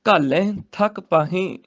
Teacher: ਘਾਲੈ ਤੇ ਪਾਹੇ ਨਾਸਕੀ ਉਚਾਰਨ ਹੋਏਗਾ ਬਿੰਦੇ ਸਹਿਤ